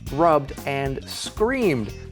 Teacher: the verb ends in a vowel sound or l-n-r-b-g-m-z-s or V then Ed is just said like a D sound it doesn't become an extra syllable